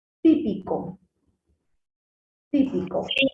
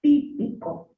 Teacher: donde hace mayor fuerza de voz es en la ti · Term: sílaba tónica